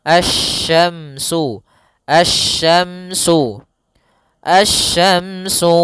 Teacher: huruf syin makhrajnya dari tengah lidah kita